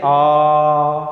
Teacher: विवृत का मैंने बताया पूरा मुख खुला रहता है जैसे आ, और फिर अर्धविवृत में मैंने क्या बताया कि मुख विवृत से थोड़ा सा क्या रहता है कम, लेकिन अर्ध संवृत से क्या रहता है अधिक रहता है।